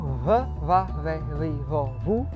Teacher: o B, que representa a fricativa bilabial